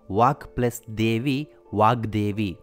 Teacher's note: ಪೂರ್ವ ಪದದ ಕೊನೆಯ ವ್ಯಂಜನ ಕ ಇದೆ. ಅದು ಸಂಧಿ ಕಾರ್ಯ ನಡೆದಾಗ ಗ ಆಗಿ ಬದಲಾಗಿದೆ. ಉತ್ತರ ಪದದ ಮೊದಲ ಸ್ವರವು ಒತ್ತಕ್ಷರವಾಗಿ ಸೇರಿಕೊಂಡಿದೆ. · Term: ಜಶ್ವ ಸಂಧಿ